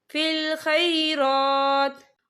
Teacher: और आगे देखिए आपको छोटी सी तोई लिखी नजर आ रही है, तो ये वफ़े मतलब की अलामत है, तो यहाँ पर ठहरना बेहतर है। वफ़ की सूरत में ता जो है साकिन हो जाएगा